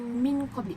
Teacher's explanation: Yang keempat saya gariskan min qabli, nun mati bertemu dengan qaf, itu adalah ikhfa sebab huruf lam berharakat kasrah, tanwin bertemu dengan huruf qaf, jadi cara membacanya adalah sama dengan dengung dan ditahan selama 3 harakat